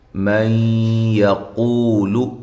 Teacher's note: یہاں نون ساکن کا ادغام ہے مع الغنہ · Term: ادغام مع الغنہ